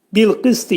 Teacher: Ta hərfindən sonra i ığlaşır. Ta hərfinin məxrəci, demək dil yuxarı damağa dəyər dəyməz vəziyyətində qalın ta deyirik və i-ni də ığlaşdırırıq.